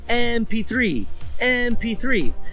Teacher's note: The letter M, when you say the letter M, it has a vowel sound. It starts with like an E sound.